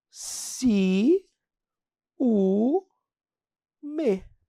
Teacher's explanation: vogal I encontrou vogal u sílabas diferentes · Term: iato